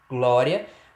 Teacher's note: perceba na última sílaba também o encontro aí da semivogal I com a vogal A. E perceba que é o encontro perfeito. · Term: ditongo crescente